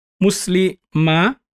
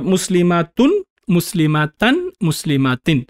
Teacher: tanween is really adding a noon sukun sound at the end